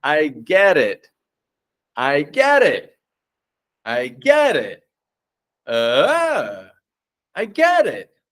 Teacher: we can start to connect words by keeping the T's soft and quiet, right? And powering the vowels. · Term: flap T's